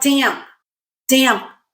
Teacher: like luck it's very soft in a word like damp damp very soft there is a teeny tiny little puff